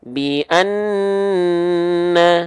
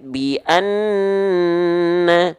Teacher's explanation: Contoh ya, misalnya kita bahas dulu yang ditahan. Ya, kalau nun bertasydid atau mim bertasydid dia ditahan 2 harokat